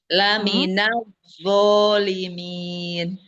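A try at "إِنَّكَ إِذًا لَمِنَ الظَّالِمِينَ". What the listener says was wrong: Oke, alhamdulillah barakallah. Untuk bacanya sudah cukup bagus ya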